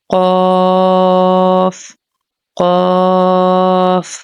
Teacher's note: قاف قاف مستعلیہ لیٹر ہے، تھکر ٹون میں پڑھیں گے قاف کو